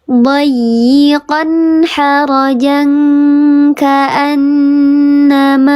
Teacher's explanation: Dibacanya dengungnya 3 harokat, tingkatannya yang paling sempurna gunnahnya, sehingga masuk seluruhnya ke hidung. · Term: gunnah musyadadah